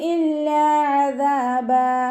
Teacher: ലാമിന് ശബ്ദ 2 ഹർഫുകൾ ഉച്ചരിക്കുന്ന കനം കൊടുക്കുക. അണിൻ്റെ മഖ്റജ് വസത്തുൽ ഹൽക്കാണ്, സൗണ്ടിനെ ഹംസയായി പോവാതെ ശ്രദ്ധിക്കുക. ദാലിൻ്റെ കൂടെ അലിഫ് മദ്ദു വന്നു, 2 കൗണ്ട് നീട്ടിക്കൊടുക്കുക.